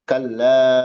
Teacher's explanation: Kalla dipanjangin empat atau lima harakat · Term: mad munfasil